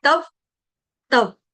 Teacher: यानी कि मैं दो व का उच्चारण कर रही हूँ